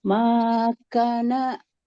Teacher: kafnya fathah bertemu alif harus panjang dua harakat